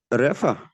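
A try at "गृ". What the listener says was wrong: No, Refa no. Gr. It is vowel here. Gr. Gakara and Rikara. Rikara is a vowel and Refa is a consonant.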